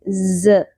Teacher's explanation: ز کو شدت سے پڑھیں گے، سیٹی کی آواز آئے گی، بزنگ ساؤنڈ پہ آئے گی